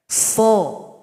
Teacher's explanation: Jadi bunyi O itu karena pangkal lidah naik. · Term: huruf shad